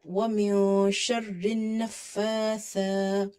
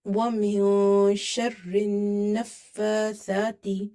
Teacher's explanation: Both are vertical harkas, so we will stretch the fa and tha both sound.